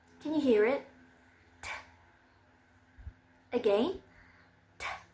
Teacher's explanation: It's voiced, and the place of articulation is alveolar.